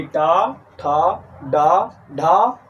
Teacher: ऐसे वर्ण जिन्हें बोलने के लिए हमारी जीभ उल्टी होकर के, अर्थात जीभ की उल्टी नोक जब हमारी मूर्धा को स्पर्श करती है तो ऐसे वर्ण को मूर्धा वर्ण कहे जाते हैं